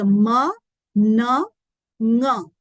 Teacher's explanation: m n and the NG sounds that is a m n these are sounds where the sound has to naturally resonate through the nasal cavity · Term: nasal sounds